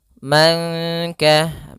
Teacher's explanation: nun sukun bertemu kaf, maka samarkan nunnya kepada huruf kaf. Dia termasuk ikhfa lagi.